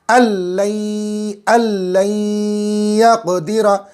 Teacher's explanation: नून साकिन की आवाज़ ख़त्म है, लेकिन आवाज़ नाक में जा रही है